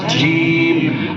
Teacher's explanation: جب تک بیچوں بیچ زبان سے اس کی ادائیگی نہیں ہوگی تو کہیں زیم نکلے گا اور کہیں کچھ اور نکلے گا